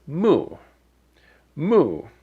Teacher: we know that it's the 4th tone, which means the falling tone